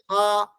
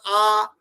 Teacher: মুখটা পুরো হা করেছে সেই জন্য ওটা বিবৃত হয়ে গেছে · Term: বিবৃত স্বর